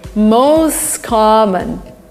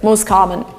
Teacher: T disappears, the words are linked together.